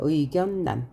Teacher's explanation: 니은 리을이 결합해서 리을 리을로 바뀌지 않고 니은 니은으로 바뀌는 · 의견난이라고 썼는데요. 우리가 읽을 때는 리을이 니은으로 바뀌었어요. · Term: 유음화의 예외